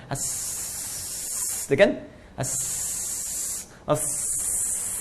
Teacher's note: jadi nafas tetap mengalir ketika menyebutkan hurufnya, itu hamas. Ya, nafasnya tetap mengalir.